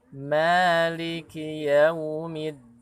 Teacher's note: Kemudian Maliki yaumiddin. Maliki, huruf ma-nya mad tabi'i, dua harakat seukuran diayunkan.